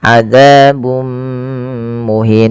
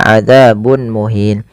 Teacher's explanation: Kemudian azabum muhin, ada di sini dhammatain bertemu dengan mim, yang ini kita namakan dengan bacaan idgham bi gunnah, yaitu cara membacanya memasukkan tanwinnya kepada mim dan ditahan